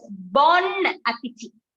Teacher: The N is pronounced. It is bon appetit.